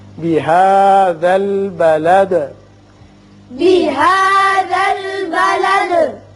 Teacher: یہاں وصل کی صورت میں آپ دال کے نیچے زیر پڑیں گی بلدی وانت، لیکن جب آپ وقف کرنا چاہیں چونکہ آیت ہے تو دال ساکن ہو جائے گی اور ساکن ہونے کے ساتھ ساتھ اس کی صفت قلقلہ بھی ادا ہوگی